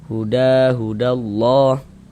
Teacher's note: Jangan terlalu panjang ya, hanya dua harakat saja. · Innal huda dipanjangkan 2 harokat. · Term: mad tabi'i